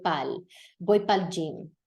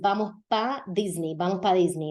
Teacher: You know that in Puerto Rico, in the Caribbean, this happens incluso in Venezuela, Colombia, that they'll drop the second syllable of para, and it'll sound like pa